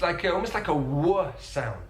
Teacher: Now, Danny Dyer uses another feature that I find really interesting. He uses the vocalization of the dark L.